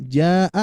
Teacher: Bila setelah huruf mad terdapat hamzah yang berada pada satu kata yakni huruf mad dan hamzah berada pada satu kata yang sama, contohnya jaa, nah itu ya. Ini wajib dibaca panjang lebih dari 2 harokat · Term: mad wajib muttasil